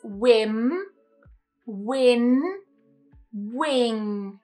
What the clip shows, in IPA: n and ŋ